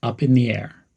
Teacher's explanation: Emphasize up and air,